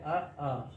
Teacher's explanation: इसको बोलने में कंठ का इस्तेमाल होता है। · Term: कंठ से बोलने वाले स्वर